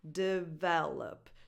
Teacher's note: So the other 2 vowels, the first and the third one, are just schwas. Develop. So no definition in the first and the third syllable, just on the second one.